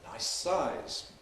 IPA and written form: ˈnaɪs ˈsaɪz (nice size)